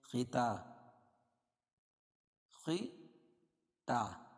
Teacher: خواہ موٹا ہے اور تا باریک ہے. خطا، خطا کھڑا زبر قائم مقام الف مدہ کی الٹا پیش قائم مقام واو مدہ کی.